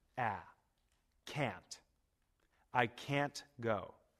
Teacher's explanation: The vowel sound in can't is long and strong.